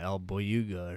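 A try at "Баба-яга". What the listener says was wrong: The Baba Yaga. You just said El at the beginning, like it's Spanish. I'm pretty sure it's like Russian.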